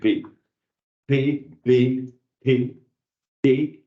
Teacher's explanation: P c'était un son qu'on appelle occlusif occlusif à savoir qu' il a besoin de la fermeture des lèvres la pression de l'air derrière les lèvres et de son échappée soudain pour pouvoir fabriquer la fréquence de l'air qui est du p